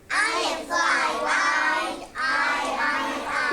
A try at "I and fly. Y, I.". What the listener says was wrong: Now, maybe it's hard for you to remember to say Y here. It is I and fly. Y, I. It says it's long I sound at the end of a short word.